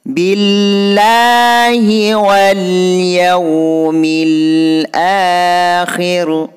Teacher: Billahi ini hukum bacaan lafaz Allah yang harus dibaca tipis karena lafaz Allah diawali baris kasrah